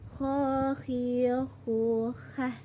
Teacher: Huruf ini dikeluarkan dari tenggorokan yang didekatkan dari rongga mulut. Ciri khas terdapat seperti suara orang yang sedang mendengung.